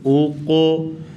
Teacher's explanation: قوف کو اوپر قلقلہ کریں گے، اور قوف حروف مستعلیہ میں سے بھی ہے، اسے موٹا بھی کریں گے